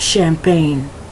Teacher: That CH has a more of an SH sound, so it's champagne.